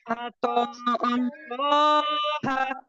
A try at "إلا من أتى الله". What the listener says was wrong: जी, ये लफ्ज आत अल्लाह नहीं है, अतल्लाह है। ठीक है, हमजा को आप जल्दी अदा करेंगे, आत अल्लाह नहीं पढ़ेंगे। इल्ला मन अतल्लाह